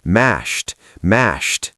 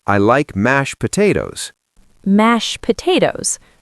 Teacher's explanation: He was putting so much effort into the ending. But in a sentence, I like mashed potatoes, the D disappears.